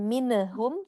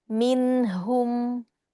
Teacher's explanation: Hati-hati nun sukun ya sayang. Jadi tidak mine ya, tidak tawalud ya. Jadi bukan minehum tapi bersih.